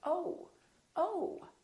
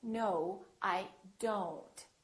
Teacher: it's actually two sounds, it's O and U together. So you have to move your mouth from O to U